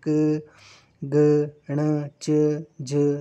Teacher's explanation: तो अल्प प्राण जो होते हैं इनके उच्चारण जब हम करते हैं तो फेफड़ों से बाहर निकलने वाली जो वायु होती है उसकी मात्रा कम होती है। जैसे क ग ण च ज ये जो है वो आपके अल्प प्राण हैं।